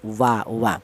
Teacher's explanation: Huruf wawu ini dihasilkan dari kedua bibir yang renggang atau tidak nempel. Kita bilang wa itu melibatkan kedua bibir, baik bibir bawah atau bibir atas, tapi bibirnya tidak nempel alias renggang, wa wa.